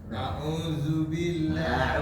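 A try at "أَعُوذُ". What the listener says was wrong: A'udzu lebih tipis. Lebih tipis Pak. Zu. Zu. Keluarin lidahnya Pak. Keluarin lagi. Zu. A'udzu.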